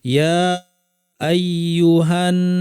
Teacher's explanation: নুনের উপর তাসদিদ লম্বা গুণা, এরপর একটা আলিফ আছে, দুইটাই টানতে হবে।